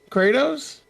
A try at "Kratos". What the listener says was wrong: Kratos. Not. There's no Y in the middle of his name. Kray. Kratos. It's not a crayon. know that's weird. It's Kratos.